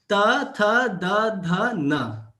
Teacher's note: स्वमेव जिह्वा दंत समीपम आगच्छति, जिह्वा दांत के समीप आती है।